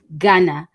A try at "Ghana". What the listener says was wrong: You need to pronounce it with the right intonation. It's called Ghana.